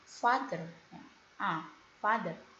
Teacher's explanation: back, bagian belakang dari mulut dan cara mengucapkannya terbuka seperti bunyi a